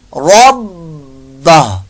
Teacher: با مشدد میں قلقلہ آ رہا تو جماؤ زیادہ ہوگا